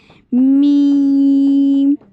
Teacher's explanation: आपके होंठों के खुश्क हिस्से से, जहाँ पर लड़कियां सुर्खी लगाती हैं, ठीक है। जब आप ये होंठ जो है, खुश्क हिस्सा जो है वो बंद करते हैं दोनों होंठों का, तो उससे अदा होता है मीम